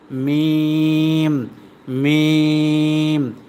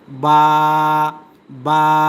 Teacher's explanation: তারপরে দেখেন এই দুইটা ঠোট দেখেন উপরের যে দুইটা ঠোট সম্পূর্ণ মিলানো আর এটা কিন্তু সম্পূর্ণ মিলানো না তাইলে দুই ঠোটের শুকনা জায়গা থেকে উচ্চারিত হয় মিম মিম আর দুই ঠোটের ভিজা জায়গা থেকে উচ্চারিত হয় বা